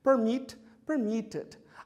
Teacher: o verbo permit é um verbo com duas sílabas e a última sílaba é a sílaba tônica, é a sílaba de ênfase